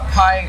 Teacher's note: you if you put your hand in front of your mouth a pie is accompanied by a large puff of air